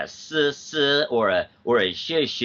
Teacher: if I would make like a sibilant sound, like a s or a sh like that, that's gonna be more of a noise and not of like a tone signal